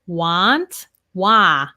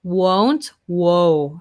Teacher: want we have the ah want whereas won't we have that o